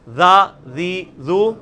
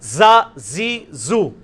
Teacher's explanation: ذا ذی ذو, سیٹی نہیں اس میں نرمی. ذا ذی ذو, ذا زی زو, اس میں وہ سیٹی زیڈ والی آواز. اور یہ وہی مخرج ہے لیکن تھوڑا موٹا.